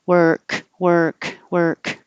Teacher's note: the back of my tongue is making a k at the same time the front is making an R